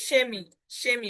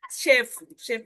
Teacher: যখন সেহা শব্দের শুরুতে থাকবে, তখন তার উচ্চারণটা কিন্তু তালবীয় স এর মতো হবে